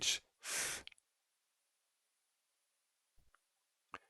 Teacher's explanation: It's similar to the th in the sound think, and it doesn't have any voice to it, so it's not th as in with delta, but it's just th.